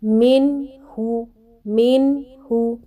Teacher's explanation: نون جیسے ہی ادا کرتے ہیں ناک کی طرف آواز جانا شروع ہو جاتی ہے، یہی غنہ ہے۔